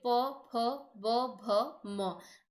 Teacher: अब होंठों के माध्यम से हम बोलेंगे, देखिए, प, फ, ब, भ, म। जीभ का प्रयोग नहीं हो रहा है, केवल होंठों का